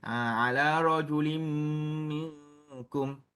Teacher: Hukumnya ialah idgham ma'al gunnah, di mana kita memasukkan huruf tanwin tu ke dalam huruf mim.